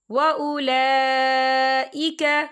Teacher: لام کے اوپر کھڑی حرکات ہے اور اس پر مد بھی ہے، تو ہم اسے 4 حرکت کے برابر کھینچے پڑھیں گے